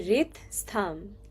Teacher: You have to imagine that there's an I in the middle of like the R and T. So, it would be rit stham.